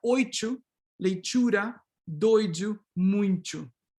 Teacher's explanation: if you have this glide before the D and the T, many people actually affricate the T and D